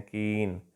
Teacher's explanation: The lips are spread as in the vowel sound in कीन।